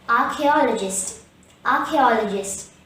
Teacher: the stress is on the third syllable ah there's one schwa in this word hence the correct pronunciation · The word archaeologist has 5 syllables: Gist. The stress is on the 3rd syllable A. There's one schwa in this word.